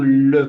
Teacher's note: vous apercevrez que la langue se colle au palais le la pointe de la langue qu'on appelle Apica ça se · Et si je prends le son le, par exemple, c'est un le, vous apercevrez que la langue se colle au palais. La pointe de la langue, qu'on appelle apica, ça se colle au palais. Pourquoi? Parce que l'air, par conséquent, ne pouvant pas sortir tout droit, sort par les côtés. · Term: apico palatal, apicopalatal